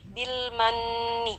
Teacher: Kemudian ada nun bertasydid di sana, hukumnya gunnah musyaddadah. Kita baca dengan kadar gunnah yang paling sempurna, yaitu di tingkatan akmal ya, hingga kurang lebih 3 harkat kadar dengungannya.